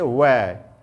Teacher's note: वह एक ऐसा वर्ण है जो दंत और ओष्ठ के माध्यम से बोला जा रहा है, इसलिए इसको कहते हैं वह। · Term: दंत ओष्ठ